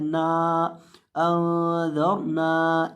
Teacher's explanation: नून को आखिर से लंबा करना है